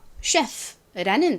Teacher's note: 이렇게 단어 속에서 ch가 취나 크 발음이 아니라 쉬 발음이 나는 경우는 비교적 적은데요. 보통 원어가 프랑스어에서 온 단어에서 이 ch가 쉬의 소리가 납니다.